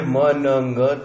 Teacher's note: म न ग तीनों वॉइस्ड हैं और तीनों नेजल हैं। एक और इसमें है कि म जो है बाइलेबियल है, न जो है वो अल्वेओलर है।